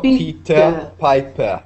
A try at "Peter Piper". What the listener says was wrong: No R.